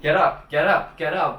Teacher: have sort of a liaison we can get and up and since we get that t is between two vowels these two vowels right here it would be pronounced a bit like a d